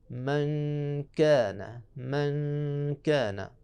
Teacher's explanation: باریک والا کاف، تو وہاں باریک غنّہ ہوگا